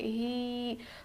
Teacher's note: ہا پر کھڑی زیر ہے، تھوڑا کھینچ کر پڑھیں گے، ہی، کنتم بہی۔